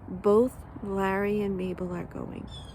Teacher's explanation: when I'm not accentuating it, the l is up higher on my teeth. It's not between my teeth.